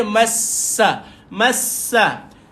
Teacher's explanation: Sin ini ada sifat keluar angin. Ada hamas juga pada dia.